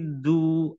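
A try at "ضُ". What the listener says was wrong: Nah, di du-nya masih ya, pas lagi di sama du masih seperti da, maksudnya. Jadi kayaknya yang main itu ujung lidahnya. Jadi do jadi seperti itu. Seharusnya yang main pinggir lidahnya. Do di seperti itu.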